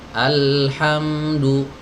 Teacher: harus dialirkan dulu huruf lamnya sejenak, suaranya dialirkan. Alhamdu mengalir dulu lamnya ya, baru masuk ke ha. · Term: tawassut